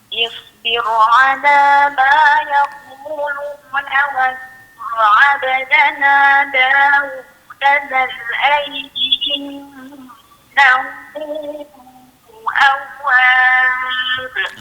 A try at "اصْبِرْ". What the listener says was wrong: Sad tadi. Dia mati dengan keadaan itbaq kembang sikit. Kemudian ra tu bagi tipis elok. Isbir ala ma.